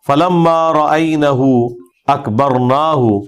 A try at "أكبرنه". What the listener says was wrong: فلما رأينه أكبرنه أكبرناه نہیں ہے پتر، أكبرناه نہیں ہے، أكبرنه نون کو نہیں کھینچنا. أكبرنه